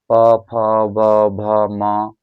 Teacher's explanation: जब हम इन पा वाले वर्ग को पढ़ रहे हैं तो हमारे क्या हो रहे हैं? ओट आपस में क्या हो रहे हैं? टकरा रहे हैं। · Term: ओष्ट व्यंजन